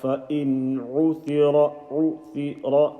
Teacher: nun sakin ayn, so it's going to be normal izhar. فَإِنْ عُثِرَ, عُثِرَ, no all the stretching.